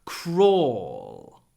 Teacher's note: dark L, that's l in your throat at the end.